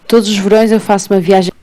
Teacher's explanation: pronunciou os Vs com o som V e não B, enquanto que o de Braga manteve o som B.